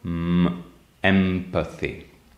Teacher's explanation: the nasal consonant [m] is bilabial, so you put the two lips together